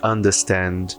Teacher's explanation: o R, ele vem depois de uma vogal e antes de uma consoante. Eu não preciso articular, pelo menos não no britânico.